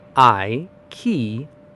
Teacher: It is just three super quick syllables with a big bright punch right in the middle. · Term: stressed middle